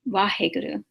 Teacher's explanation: there's no real V and there's no real W. It's a mixture of both. And in the transliteration, we kind of do our best to use whichever letter seems to fit the best.